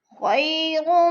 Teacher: خی پہ یا لین ہے، یا لین کو لمبا بھی نہیں کرنا، جھٹکا بھی نہیں دینا۔